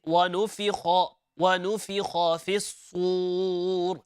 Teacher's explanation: the letter kha, it's heavy, it's full mouth, inshallah, and not keeping it empty mouth.